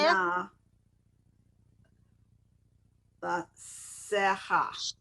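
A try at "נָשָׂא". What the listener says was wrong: Sheh. No, there's no ha at the end.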